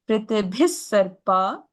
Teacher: the second one is visarga plus sa, so it's an extra sa